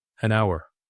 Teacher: H is completely silent. It begins with an OW sound, a vowel sound.